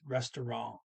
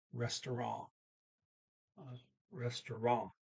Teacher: they don't say that T on restaurant. As a matter of fact, the N ends with a little nasal only N, so it's restaurant.